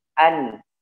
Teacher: Baca hurufnya an ya, nun ya, ujung lidahnya disentuhkan ke gusi